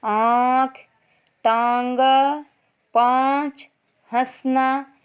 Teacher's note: अनुनासिक का उच्चारण करते समय सांस जो है मुंह और नाक दोनों से निकलती है, थोड़ी सी गर्म होती है, जैसे आँख, तांगा, पाँच, हंसना।